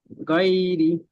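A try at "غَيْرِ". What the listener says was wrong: রি টান হবে না, রি টান হবে না। হ্যাঁ, টান হবে না, হবে না, প্রথম বলেন। কেন টান হবে না? রিয়ে কেন টান হবে না? ইয়ার সাথে ডান দিকে তো জের আছে, রজের রি তো। ইয়া মাদ্দা তো, এটি টান হবে তো একালি।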